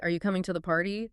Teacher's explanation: The word party goes up. · The first is rising intonation. Rising, so your voice goes up at the end.